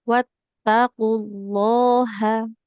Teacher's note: Di H-nya enggak boleh panjang ya.